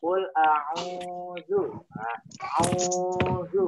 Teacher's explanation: Nah, au-nya itu dibaca panjang, itu namanya bacaan matobi'i.